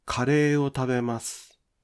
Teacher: The pitch of ta in tabemasu would not drop.